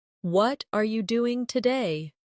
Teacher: For example, when someone says, "What are you doing today?" the stress usually falls on what and doing